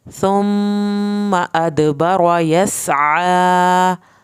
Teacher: सीन पे सीटी की आवाज़ निकलेगी, आपने आइन को हल्क से अदा करना है और खड़ी ज़बर की वजह से इसको खींच के पढ़ना है।